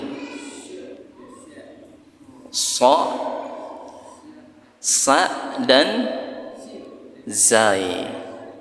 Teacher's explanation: ujung lisan di gigi bawah, atau ini disebut dengan huruf sofir. Apa huruf sofir itu? Huruf yang seakan-akan bersiul.